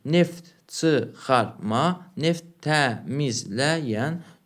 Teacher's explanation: Hər iki sözdə vurğu son hecəyə düşür.